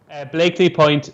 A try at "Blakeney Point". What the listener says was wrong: Blakeney. You say Blakely. Blakeney Point. Blakeney.